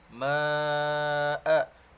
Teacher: mad jaiz munfasil, dibaca panjang 5 harakat.